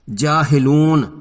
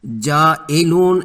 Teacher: ہا کو زیر کے ساتھ پڑھنا ہے، منہ کے اندر کی ہوا باہر نکال کر۔ جاہلون پڑھنا ہے، جائلون نہیں پڑھنا، ورنہ اس طرح یہ ہا حمزہ بن جاتی ہے۔